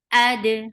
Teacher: Mul, mul. Ad, hamza is very sharp. For fatha, open your jaws. Attach with dal, and dal will get sifa of qalqala.